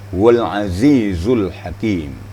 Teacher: Kalau zal lembut, kalau zai ini agak kasar bacaannya. Giginya dirapatkan dan ujung lidah ditekan kepada gigi